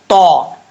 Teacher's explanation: اب تا، یہ بھی حروف مستعلیہ میں سے پر پڑھا جائے گا، اس کا مخرج ہے زبان کی نوک اوپر والے دانتوں کی جڑوں سے لگے اور زبان اوپر کی طرف اٹھے